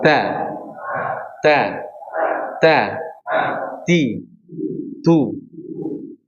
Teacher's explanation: Kalau huruf ta ini cara bedanya diberikan sifat hames ya. Karena kalau kita tidak memberikan sifat hames pada huruf ta ya berharakat ya, apapun harakatnya maka diberikan sifat hames.